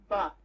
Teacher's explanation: The lips are closed. They stop the air completely.